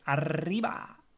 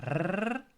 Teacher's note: First is the rolling R, which is the R, like in the Spanish arriba, right?